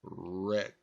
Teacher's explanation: if I go wrestle, all you hear is the R sound. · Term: the W is silent